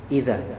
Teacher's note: setelah dza fathah ketemu dengan alif maka dia menjadi mad tabi'i dua harakat